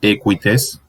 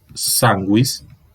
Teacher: marcando que esta U no es plena, sino un apéndice vocálico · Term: apoyos vocálicos